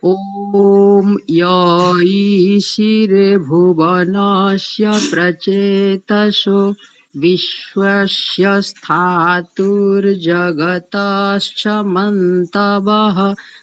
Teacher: थोड़ी सी सकारों में बस त्रुटि है, तालव्य शकार हो रहा है दंत्य सकार को